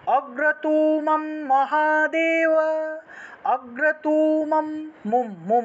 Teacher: দুইবার হাইপেন দেওয়া মানে হলো টান দিতে হবে ঠিক আছে এখানে অগ্রতু তুতে গিয়ে টান দিবেন